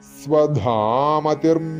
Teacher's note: അമതി കഴിഞ്ഞിട്ട് വിസർഗം വരുന്നതുകൊണ്ട് അവിടെ ഇർ എന്നാണ് ചേർക്കണം. കാരണം വിസർഗം കഴിഞ്ഞിട്ട് മയാണ് വരുന്നത്.